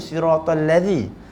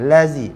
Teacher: bila kita tak keluar lidah tu telah bertukar daripada makhraj huruf zal jadi huruf zai. Jadi pertukaran makhraj boleh membawa kepada perubahan pada makna.